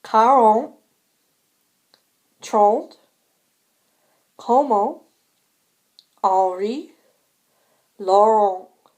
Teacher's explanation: you should be passing air out through your nose.